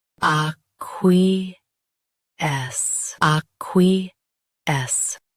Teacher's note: Both US and UK have the same pronunciation of this word. Stress qui. Keep S soft and clear.